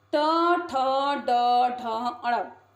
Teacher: ट जब बोलते हैं तो जीभ पलट जाती है और अपने आप को स्पर्श करती है। इसका उच्चारण स्थान है मूर्धा।